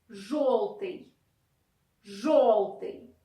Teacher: Yo, after je, we pronounce basically like o again.